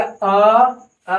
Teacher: अ बोलने से होट गोल नहीं हो रहा · कौन कौन आता है, इसे बोल दिया अ बोलने से होठ गोल नहीं हो रहा है, इसलिए अवृत्ताकार स्वर्ण हो गया। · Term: अ वृताकार